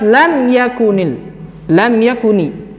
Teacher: mim sukun bertemu dengan huruf ya maka harus dibaca jelas tidak boleh berlama-lama menempelkannya